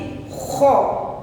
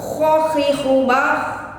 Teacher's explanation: bibir maju ke depan. Kemudian ada getaran di pangkal tenggorokan sehingga udara yang keluar terasa kotor. Rasa-rasanya seperti ketika kita mau mengeluarkan dahak.